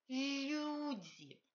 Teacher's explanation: L russe n'est pas I alvéolaire, c'est pas L comme le français. L russe est dental, on touche les dents. Et il faut palataliser ce L. I, toucher le palais.